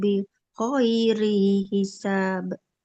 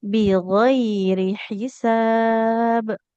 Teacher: Nah rinya enggak boleh panjang.